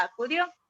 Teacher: la sílaba dio sí porque tiene la mayor fuerza de voz